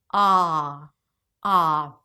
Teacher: We want more of a back a as in cop.